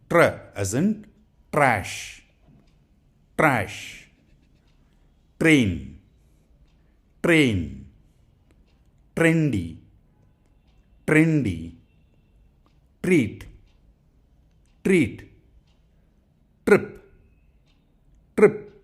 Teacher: to push the air right to the front of your teeth this exercise is almost like a CH sound like a CH sound in chicken except that there's a sneaky little r sound in there as well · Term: T and R